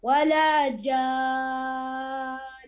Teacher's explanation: مد جان ست حركات، هذا مد لازم كلمة مثقل